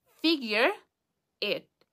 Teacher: Figure ends with an R, and this R is the beginning of the next word because we are connecting. So figure, figure, da, da, da, and schwa, okay, figure. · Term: connective speech